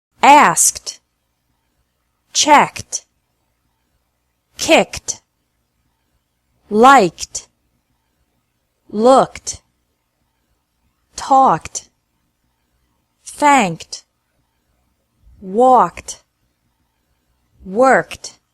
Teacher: ed pronounced like t after English verbs ending with k sound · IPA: /t/